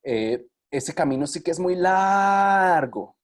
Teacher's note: nosotros usamos la duración de esa vocal largo para indicar justamente la longitud de un camino